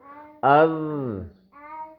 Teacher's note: اس زال کی آواز باریک ہوگی لیکن نرم ہوگی